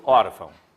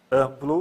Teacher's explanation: o som sai pelo nariz se vocês fecharem o nariz e falarem amplo vocês vão notar que o ar está saindo pelo nariz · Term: nasal